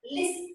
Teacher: In the word listen, you don't hear the T.